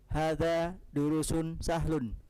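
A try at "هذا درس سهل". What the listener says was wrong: Nah, kalau antum bilang durus, berarti setelah ra ada waw. Panjang jadi ya, durus. Ada waw tidak setelah ra? Durusun itu kalau setelah ra ada wawunya. Nah, berarti bukan durus.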